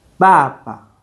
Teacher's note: bà ba You notice you have the same syllable twice, but one has the fourth tone and one has a neutral tone or no tone. So, the second one is always much lighter.